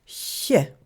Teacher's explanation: Deux consonnes toujours mouillées, le tje, donc avec un son T suivi d'un son ch mouillé, tje, et le ch, un son ch qui est à la fois long et mouillé, ch. Autrefois, il se prononçait avec un son T au milieu, chtje. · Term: chia